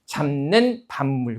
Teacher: 비읍이 비음 앞에 왔을 때 다 비음인 미음으로 발음이 되고요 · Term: 비음화